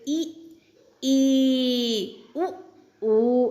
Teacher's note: संवृत जिन स्वरों के उच्चारण में मुख द्वार पूरा बंद रहता है, जैसे ई, ऊ आप बोलकर देखें तो खुद पता चलेगा आपको।